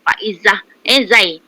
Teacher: zai yang berdesir jangan zal pula